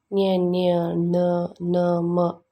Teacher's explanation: ಈ ಅಕ್ಷರಗಳು ನಾಸಿಕದ ಸಹಾಯದಿಂದ ಹುಟ್ಟುವುದರಿಂದ ಇವುಗಳು ನಾಸಿಕಗಳು